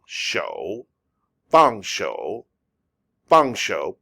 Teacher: this is a fourth tone why do i say it i say it like i'm angry